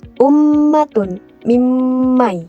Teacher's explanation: Di mana ghunah ini adalah mendengungkan mendengungkan suara dari pangkal hidung selama dua harakat saat melafalkan mim sukun dan juga nun sukun.